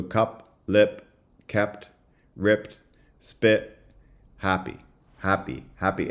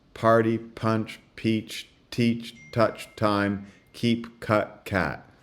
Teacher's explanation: if you compare happy to peach, you should be able to notice a big difference in whether there's aspiration on the P sound in the two.